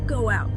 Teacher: Spoken quickly, it often sounds like go out. There's a little W linking them.